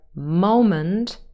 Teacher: the initial syllable is stressed